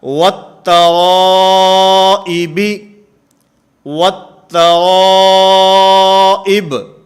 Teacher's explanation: اسی طرح والتوائب، والتوائب، اس کے اندر بھی لام تعریف کے بعد حروف شمسیہ میں سے تا ہے، یہاں بھی واو کا تا کے اندر ادغام ہوگا